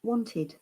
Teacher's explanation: Wanted, remember, it is not wa, it is o.